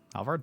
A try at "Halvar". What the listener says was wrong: The D is silent.